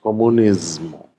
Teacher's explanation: die meisten Spanier und alle Italiener sprechen dieses S stimmhaft aus, weil danach ein M vorkommt.